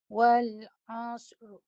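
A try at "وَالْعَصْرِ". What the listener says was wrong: Hati-hati Haji hati-hati. Sod jangan cantum dengan ra. Ada sikit pun tak boleh pantul. Sod tak boleh memantul sikit pun.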